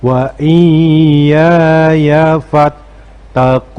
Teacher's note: Yang perlu diperhatikan di bagian akhir ayat ini, pada bagian ini ucapan atau bacaan kun kita panjangkan karena ini pada di bagian akhir yang disebut dengan mad arid lis sukun.